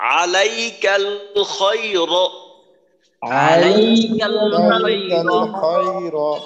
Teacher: এখানে কোনো টান নেই, আলাইকাল খায়রের মাঝে দুইটা লিনের হরফ আছে, নরম করে উচ্চারণ করতে হবে, লাই এবং খয়।